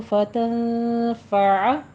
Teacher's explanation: फत यहाँ पे इख्फा कीजिए, 2 काउंट करना है, 2 हरकत तो बराबर रुकना है, लंबा खींचना है।